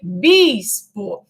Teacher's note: A pretônica, que é o E, né, ela sofre aférese, ela cai, porque a sílaba tônica, né, a vogal tônica de bispo é o I, bispo. Então, o I é a vogal tônica. Então, na palavra, lá no latim vulgar, essa vogal que inicia a palavra, né, a pretônica, o E, sofreu aférese, caiu da palavra.